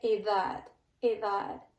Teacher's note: in the word edad, which means age, this D in the middle is pronounced more like a TH